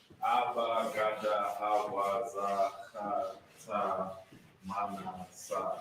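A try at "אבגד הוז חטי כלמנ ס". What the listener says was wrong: Tayaka. Tayaka. Because you forgot Ka. Tayaka. Tayaka. His first one is the hard Ka. The other one is the soft Ka. Tayaka.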